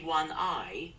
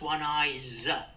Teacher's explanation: If I say one I, it's not one ice, it's one eyes. It's pronounced with a Z.